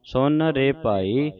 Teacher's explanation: ਇਹਨੂੰ ਸੁਨ ਕਹਿਣਾ ਸੁਣ ਨਹੀਂ ਕਹਿਣਾ ਨਨਾ ਹੀ ਬੋਲਣਾ ਹੈ